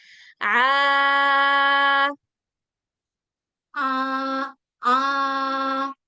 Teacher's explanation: kayak suara bindeng gitu ya, tapi suaranya murni dari mulut. Kayak kita bilang huruf hamzah, huruf ba, ba a gitu dari mulut. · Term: ain